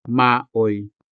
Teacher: the syllable oi is a standalone diphthong. That is because it is not attached to any consonant.